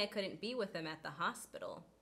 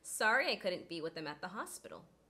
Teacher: The elided H occurs with the word him. That is because him is unstressed. The word before it, with, ends in a consonant sound.